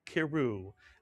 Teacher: it would be pronounced as one syllable, Kiru, as if the shva under the kaf is a grace note